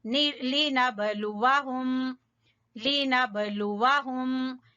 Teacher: با کے اوپر ہلکا کلکلا